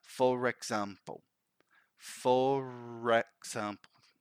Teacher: we link the word ending with the R with the word starting with a vowel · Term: linking r